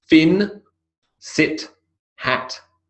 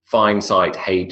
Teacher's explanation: The vowel sound is pure in fin, sit, and hat, and it is a diphthong in fine, sight, and hate.